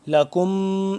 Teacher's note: لکم ما، اب دیکھیں یہ میم مشدد آ گیا، ٹھیک ہے۔ میم مشدد پہ یہاں پہ ہم غنہ کریں گے، تھوڑا سا آواز اس کو لمبی کریں گے